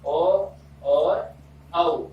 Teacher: ओ और औ इन दोनों का उच्चारण स्थान कंठोष्ठ है